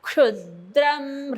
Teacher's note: क साठी जीभ मधला जिभेचा भाग वरती लागतो टाळूला, आणि मग तो आवाज येतो